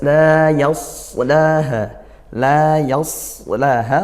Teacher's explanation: Yas itu sin, yas tebalkan begitu, dengan pangkal lidahnya dinaikkan